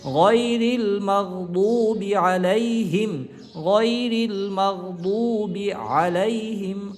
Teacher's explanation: রিল গয়রিল মিম গয়ন জবর মাগ গয়রিল মাগ দদ অপেশ বু দদ হরফটা মোটা উচ্চারণ হবে